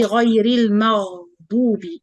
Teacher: you have to feel this running sound in the letter, like the gargling.